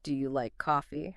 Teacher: Simple stuff like, "What do you like to do on weekends?" Simple yes no questions like, "Do you like coffee?" are also incredibly effective. Just remember that rising intonation at the end, right?